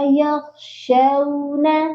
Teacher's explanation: ان الذین یخشون ربهم، نون مشدد پر غنہ کریں گے، اور یہاں پر اکثر لوگ پڑھتے ہیں یخشونا، شین کے اوپر زبر ہے اور اس کے آگے ہے واو لین، تو اس کو ہم نے کھینچ کر لمبا کر کے نہیں پڑھنا ہے، یہ پڑھا جائے گا یخشون۔